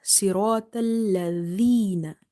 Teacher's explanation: this dhal is from the tip of your tongue when it touches the inner edges of your top two front teeth. Okay, so it's not z.